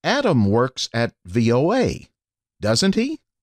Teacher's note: If the speaker is trying to confirm information, the tone rises.